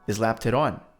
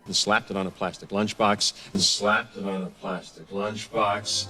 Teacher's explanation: And as it does that, the T changes its sound to a fast D sound, slapped it on.